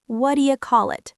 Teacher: My voice goes up slightly at the end, like a genuine question